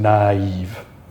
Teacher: But what you do need to be sure is to note that when you have the tréma there, you are breaking that apart. You're not saying nave, you're saying naive. Two separate vowel sounds.